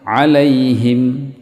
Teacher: ha itu memang ada rikhwah, suara yang terlepas dan nafas yang terlepas